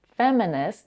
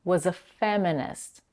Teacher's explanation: the last T in the word feminist is held and not released